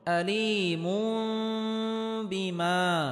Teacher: আযাবুন তানবিনের পরে ইকলাবের হরফ বা আসার কারণে এখানে ইকলাব গুন্নাহ করে পড়তে হবে, অর্থাৎ তানবিনকে ছোট মিম দ্বারা পরিবর্তন করে পড়তে হবে।